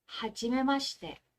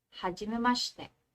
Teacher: If you notice, this one, hindi ko siya pronounce as shi. Instead, I pronounce this as sh. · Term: vowel devoicing